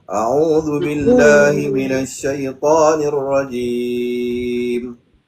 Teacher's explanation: Pastikan ain baris dhamah tu ada huruf mad dipanjangkan dua harakat